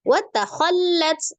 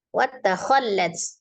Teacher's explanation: lam tasdid sifatnya tengah-tengah, tawassut atau bainiyah ya. Maka dialirkan sebagian.